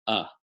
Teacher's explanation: uh is just opening the mouth a little bit and letting some air move across the vocal cords with no modification in the vocal tract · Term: schwa sound